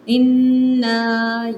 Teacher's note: پہلے نون مشدد پہ اچھی طرح سے غنہ کریں۔ اِنَّا، یہاں پہ مد متصل ہے، منفصل ہے سوری، یہاں پہ آگے حمزہ آ رہی ہے، مد منفصل ہے، اسے آپ نے 3 سے 4 حرکات بس کھینچنا ہے، زیادہ نہیں۔